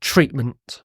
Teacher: There's what's called a glottal stop here, treatment.